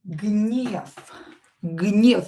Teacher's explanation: You can hear that I pronounce this V here as F because voiced consonant which is located at the end of the word will become unvoiced. V will become F.